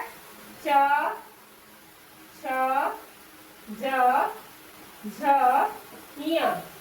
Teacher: फिर है च वर्ग, च वर्ग जो है च छ ज झ ञ, इसे किस चीज से बात बोलते हैं उच्चारण स्थान? तो तालु से।